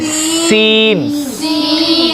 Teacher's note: सीन भी सख्ती के साथ है, सीटी की आवाज़ है